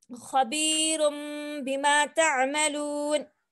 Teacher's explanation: दिखने में तो यहाँ पे नून दिखाई दे रहा, नून साकिन है, लेकिन हमको कायदा क्या बताना है कि जब नून साकिन के बाद बा आए तो हम नून की आवाज को बदल देंगे मीम की आवाज के साथ